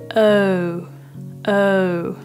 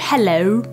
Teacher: slightly open in a round shape and then as you progress through the vowel you kind of Imagine It kind of closing down